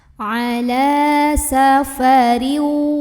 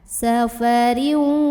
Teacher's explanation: cara membunyikan tanwinnya ini dileburkan langsung ke huruf waw sambil ditahan dulu ada dengungannya. Ala safariu, masuk sambil tahan. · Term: idgham bi gunnah